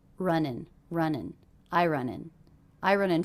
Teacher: those two words are really linked together because we have an ending consonant and a beginning vowel